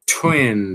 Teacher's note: Bem aspirado, né? O t.